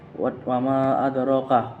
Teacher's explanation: Wa ma adraka mad jaiz munfasil karena ada mad tabi'i bertemu dengan ain di lain kata atau kalimat. Cara membacanya panjang 4 harokat.